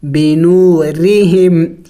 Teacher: جب را کے نیچے زیر آ جائے تو پھر اس را کو باریک پڑھی جاتی ہے